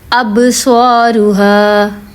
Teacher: اب با پہ میں نے یہاں پہ زور دیا. با جو ہے اس کو ہلایا کیونکہ وہ حروف قلقلہ میں سے ہے